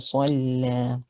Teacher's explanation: Sad is a heavy letter. It has a fatha. It is heavy on the second scale. Lam has a shadda.